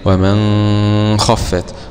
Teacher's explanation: أخفى النون عند الخاء أبو جعفر